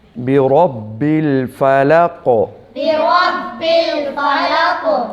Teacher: قاف پہ کلکلا کریں گے وقف کی صورت میں